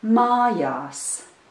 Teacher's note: the first syllable is stressed and the second syllable is unstressed